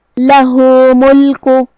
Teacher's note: یہاں مد صلہ صغرا ہے، ہم اپنی آواز 2 مد کے برابر لمبی کریں گے